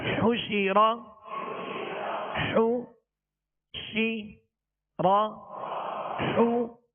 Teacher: حا پر پیش ہے، اس کی ادائیگی میں ہونٹوں کو کامل گول کریں گے